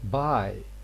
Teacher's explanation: Normally, we know that B is voiced, but in some contexts, especially when it is at the beginning of words and there is nothing before it, this initial B is voiceless